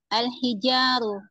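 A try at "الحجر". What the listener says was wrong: Sebentar. Al-Hijaru apa Al-Hajaru?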